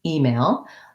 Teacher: That's the tense E sound. And the stress in email is on the E, although male still holds its clear vowel, so it has secondary stress.